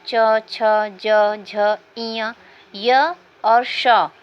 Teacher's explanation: ई और च वर्ग, य और श वर्ण का उच्चारण स्थान तालु होता है